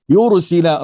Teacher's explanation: Yursila, ra di sini, ra ya tebal, ra pun tebal di sini mengikut baris yang sebelum ra